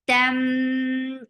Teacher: keeping the sound in your nose for a longer time. Ta is very sharp for fatha open your jaws. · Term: idgham with gunna